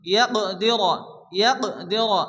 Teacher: আল্লাই আল্লাই ইয়াকদির, কফ সাকিন, কফ যেহেতু কলকলার অক্ষর হালকা ধাক্কা দিয়ে পড়তে হবে